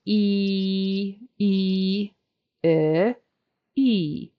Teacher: long e is e e see my mouth is wider and it's also tighter